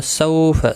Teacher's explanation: سو اولین ہے، تھوڑا نرمی کے ساتھ کھینچ کر ادا کریں گے